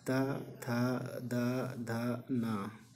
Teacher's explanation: इसको उच्चारण में जीभ दांत में सटती है